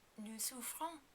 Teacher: you have to remember to pronounce the S at the end of nous, even though we usually don't. This is because ouvrons begins with a vowel sound.